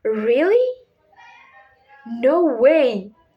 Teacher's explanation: It's the voice rises and then falls sharply. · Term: rising falling inonation, rising falling intonation